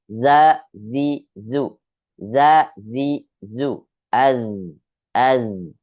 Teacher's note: Jangan sampai desis za, tidak ya, tidak ada desisnya. Dia hanya getaran saja. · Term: huruf zai